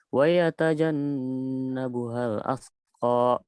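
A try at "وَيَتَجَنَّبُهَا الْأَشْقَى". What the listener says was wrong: Lagi ashqa pakai shin. Pakai shin besar. Wa yatajannabuhal ashqa.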